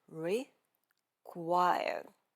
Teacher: Instead of hitting every word with equal force, we want to make it sound like weak, strong, weak. Or you can think of it as short, long, short, or even unstressed, stressed, unstressed, whichever makes it easiest for you to understand.